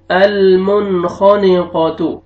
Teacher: المنخانقا، تا ضمہ المنخانقات، یہاں پہ دیکھیں نون سکون کے بعد، نون ساکن کے بعد حروف حلقی میں سے خا آ رہا ہے، یہاں پہ آپ نے اظہار کرنا ہے